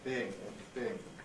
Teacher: The whole thing can sort of compress phonetically into a long e, being, being. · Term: smoothing